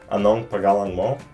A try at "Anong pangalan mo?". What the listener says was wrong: No. Pangalan. You don't gotta like. It's not like a hard G. It's like a soft G. pangalan.